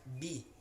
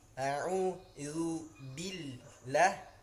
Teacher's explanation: Nah, tarik mulutnya karena dia huruf ba. Huruf ba ini huruf bibir ya, asyafatain, kedua bibir. Maka mulut kita harus beradu dan kemudian ditarik